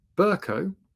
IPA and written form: ˈbəːkəʊ (Berko)